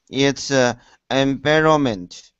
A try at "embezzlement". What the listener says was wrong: No, you're not saying the Z's. So embezzlement. Yeah, you're not pronouncing the Z because you're trying to say the L. Embezzlement. Embezzlement.